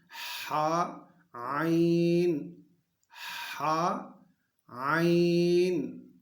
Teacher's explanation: یہ دو حروف وسط حلق سے حلق کے درمیانی حصے سے ادا ہوں گے